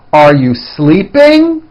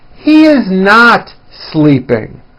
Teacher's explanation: Notice how my voice goes up at the end of a question like this. · notice how my voice comes down at the end of a sentence that is not a question